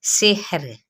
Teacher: را باریک ہو جائے گی کیونکہ را ساکن ما قبل کسرہ یعنی زیر ہے اس لیے۔